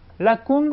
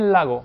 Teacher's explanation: On a cette fois une sonorisation. On passe d'une vélaire sourde à une vélaire sonore.